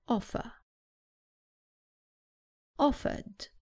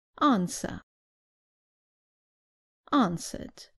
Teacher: in British English the r at the end is not pronounced so the last sound is an a offer offered another example with r at the end answer answered